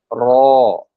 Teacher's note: digeser ke belakang jadi dia akan bergetar